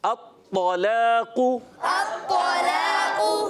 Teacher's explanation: طا موٹا رکھنا ہے, قاف بھی موٹا رکھنا ہے